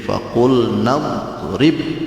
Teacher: alifnya dibuang, alifnya hilang, seolah-olah tidak ada alif, padahal ada